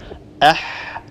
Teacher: فالحاء هي حرف مهموس يجري النفس عند النطق بها. أيضا هي حرف رخو، لأن الصوت لا ينحبس عند النطق بها.